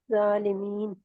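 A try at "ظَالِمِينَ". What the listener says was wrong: ज़ालिमीन, ज़ा को मोटा करे आप।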